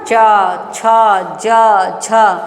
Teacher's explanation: हम जब च बोलते हैं च तो जीभ कहां जाती है तालु के पास ना च छ ज झ बोलते हैं तो जीवा हमारी तालु के पास जाती है।